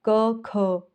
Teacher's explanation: ख में क्या है ज्यादा हवा बाहर आ रही है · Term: महाप्राण